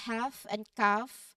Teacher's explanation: the L is not pronounced, so it's half and calf. You go right from the vowel sound to the F sound.